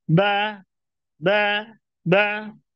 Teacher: bawah tengahnya datar pangkalnya datar berikutnya juga sama pada huruf ba huruf ba dia juga menutup kedua bibir dalam dalam keadaan lidah yang datar